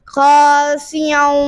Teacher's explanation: حمزہ عین کی آواز نہ ہے، حمزہ کی آواز ہے